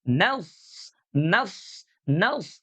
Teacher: huruf shadnya itu harus dibaca dengan suara tebal ya karena dia adalah huruf istila yang sama seperti huruf qof.